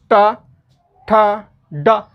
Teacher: जीभ एकदम उठ करके तालु के ऊपर जो खुरदरा जो भाग है उस लाइनिंग को वह टच कर रही है, छू रही है, तो उसको बोलते हैं मूर्धा।